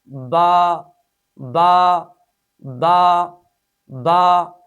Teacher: اس حرف کا مخرج ہے دونوں ہونٹوں کی تری والا حصہ، یعنی با ادا کرتے وقت دونوں ہونٹوں کی تری والے حصے کو آپس میں ملائیں گے